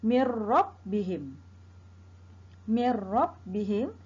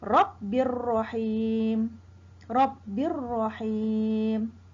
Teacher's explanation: Maka hukumnya ialah idgham bila gunnah, dibaca dengan tidak dengung.